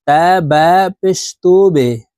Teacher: বা কলকলার হরফ নিচের দিকে ধাবিত করে ধাক্কা দিয়ে উচ্চারণ করতে হবে।